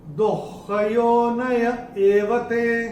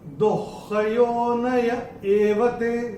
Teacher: विसर्ग का जो उच्चारण होगा वो होगा आधा ख